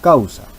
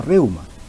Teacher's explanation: Como ejemplo tenemos la palabra causa, donde vemos la configuración del diptongo y se trata de un diptongo decreciente porque primero tiene a la vocal abierta y después a la vocal cerrada